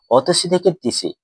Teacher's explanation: অতসী থেকে তিসি, এই অতিসি শব্দে দেখো অস্বরধ্বনি রয়েছে, কিন্তু ধ্বনি পরিবর্তন হয়ে যখন তিসি এসেছে তিসি শব্দে কিন্তু প্রথম স্বরধ্বনিটি কিন্তু নেই, অর্থাৎ লুপ্ত হয়েছে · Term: আদি স্বরলোপ